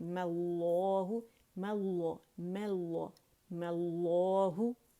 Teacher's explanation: میم ساکن پڑھنے کی بجائے اس پہ میں نے فتحہ لگا دی اور لفظ الجلالہ سے میں نے اسے جوڑ دیا